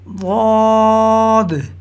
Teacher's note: زبان کی کروٹ اور اوپر کی داڑھوں کی جڑ سے ادا ہوتا ہے۔ زبان کی کروٹ سے مراد زبان کی دائیں بائیں والی سائیڈ ہے، یعنی دائیں بائیں والے کنارے۔